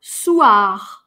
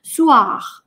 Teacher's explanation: на конце, на самом деле оно не «р», оно очень глухое, его даже опускают, его кто-то даже не слышит.